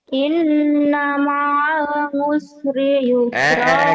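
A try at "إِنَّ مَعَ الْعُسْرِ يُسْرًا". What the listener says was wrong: Kok ngusri? Emang orang Tegal, orang Cilacap ya. Usri jangan ngusri. Inna ma'al usri yusra.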